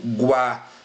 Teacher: Observe que o som aqui vai subindo. Então o U tem uma pronúncia mais fraca aqui dentro do ditongo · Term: ditongo crescente